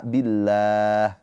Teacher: Lafadz Allah di sini dibaca dengan tarkik tipis. Kenapa? Karena sebelum lafadz Allah ini harokatnya kasroh, maka lafadz Allah dibaca dengan a billah, gitu.